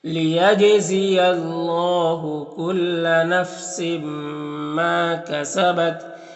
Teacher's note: और यहाँ पर तनवीन के बाद मीम में हुरूफ यौमिन में से तो इदगाम नाक़िस होगा। मा में अलिफ मद्दा एक, अलिफ को बराबर खींचेंगे